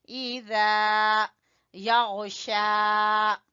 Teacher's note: کھڑی زبر کی وجہ سے کھینچیں گے شا